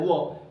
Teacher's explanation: मात्र व एक ऐसा वर्ण होता है जो दांत और ओट दोनों से बोला जाता है तो दं यानी दंत और ओट से ओनली व बोला जाता